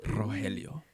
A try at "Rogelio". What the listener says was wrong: Rogelio de la Vega. you can't roll your R's.